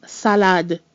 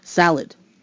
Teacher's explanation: the D in the French word salad is distinctly pronounced whereas in English salad we basically kind of sort of drop the D at the end